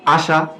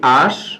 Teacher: আশা থেকে যদি আমরা ঠিক একই রকম ভাবে লিখি আশ, তাহলে এখানেও কি হয়ে যাচ্ছে স্বরের লোপ হয়ে যাচ্ছে। আর এইরকম ভাবে স্বরের লোপ হওয়াকে আমরা কি বলি স্বরলোপ।